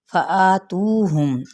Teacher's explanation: آ پہ مد صلیب الف کا قائم مقام، تو پہ مد صلیب الواو اور میم پہ اظہار شفوی